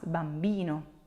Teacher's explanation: the accent is not on the first syllable but it's on the second to last